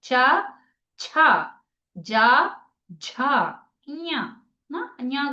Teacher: చకారములు అవి తాలవ్యము నుండి తాలువు నుండి పలుకుతాము కాబట్టి వాటిని తాలవ్యములు అంటారు